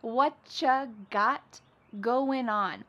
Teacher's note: Whatcha is what plus you. You becomes cha.